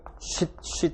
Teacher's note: 협착, 긴축, 수축, 좁은 수축을 통해서 공기가 나오게 된다. 공기가 빠져나오는 동안에 터뷰런스, 난기류가 화이트 노이즈를 만들어낸다. 또는 히싱 사운드를 만들어낸다.